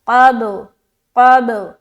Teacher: آواز ٹکراتے ہوئی لوٹتی معلوم ہوگی. قاف با زبر قب، یہ ہوا صحیح قلقلہ، قب قب.